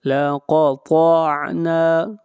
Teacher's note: طا بھی حروف مستعلیہ میں سے ہے، طا کو موٹا پڑھا جائے گا اور نون کو کھینچ کر پڑھیں گے ایک الف کے برابر، یہاں پر الف مدہ ہے۔ · قاف کو موٹا پڑھیں گے، قاف حروف مستعلیہ میں سے ہے